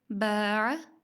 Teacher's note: باع میں با کو باریک ادا کیا جا رہا ہے، اس میں الف کے اوپر بھی کوئی اثر نہیں آیا اس با کی وجہ سے، کیونکہ یہ باریک ہے۔